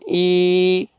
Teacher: یا سکون سے پہلے کسرہ آئے گا تو آپ نے کھینچنا ہے